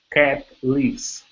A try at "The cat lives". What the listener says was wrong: So the cat lives. Instead of leaves, lives. Short I.